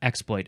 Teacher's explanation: I definitely would want to emphasize the first syllable